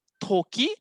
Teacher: To tu ada angin.